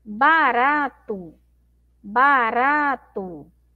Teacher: a sílaba mais forte é o rá